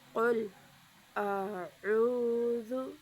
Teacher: دونوں کو حمزہ نہیں پڑھیں گے بلکہ عین اور حمزہ اور عین کو الگ الگ کریں گے · را کو باریک نہیں پڑھیں گے، را کو موٹا پڑھیں گے